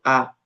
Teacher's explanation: la A, en su estilo relajado, mantiene los labios sin redondear y sin tensar. Nuevamente es la vocal que se mantiene neutra.